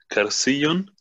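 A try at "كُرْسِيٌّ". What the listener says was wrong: Nicht Kersiyun, sondern genau, Kursiyun.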